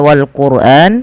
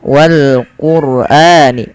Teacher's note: lafal wal Qur'an ro-nya dibaca dengan tebal ya, wal Qur'ani. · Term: bacaan tebal